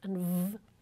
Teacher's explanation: English has labiodental fricatives